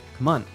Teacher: Come on is reduced and connected